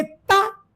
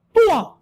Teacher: ता को पतली आवाज तुआ को एकदम मोटी आवाज